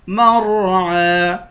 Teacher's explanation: عین کے اوپر کھڑا زبر ہے کھڑے زبر کو ایک الف کے مقدار کھینچ کر پڑھیں گے